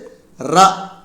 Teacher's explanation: நாவின் நுனி மேல் அண்ணத்தின் முதல் பகுதியை தொட்டு வருவதால் தோன்றும் எழுத்து